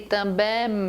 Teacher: Então, IN, AM, nós chamamos de dígrafos também. Quando você fala também, você não pronuncia o M. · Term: vogal nasal